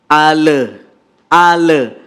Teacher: sukun langsung al-qariah satu yang kedua kadang-kadang tanpa kita sadari pemirsa ada pantulan di huruf lam seolah-olah dia bagian dari huruf Qalqalah